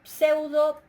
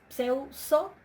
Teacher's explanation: Para una dental, pseudso, es pseuso, la dental cae ante la sigma